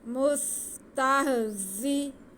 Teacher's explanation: مستہ، زا کے نیچے زیر ہے اس لیے زا کو کھینچنا نہیں ہے، صرف سیٹی کی آواز آنی چاہیے، سین میں بھی زا میں بھی. مستہزئ، واو ساکن سے پہلے حمزہ پہ پیش، واو مدہ، اسے ہم کھینچ کے پڑھیں گے.